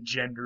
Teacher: if you try to actually say an n and an r next to each other a lot of times a d will show up